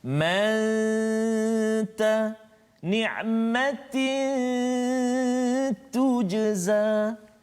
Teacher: sembunyikan kesempurnaan huruf nun itu ke dalam huruf ta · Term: ikhfa